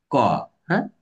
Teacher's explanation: কন্ঠধ্বনি একটু চেপে ধরছে কন্ঠস্বরটাকে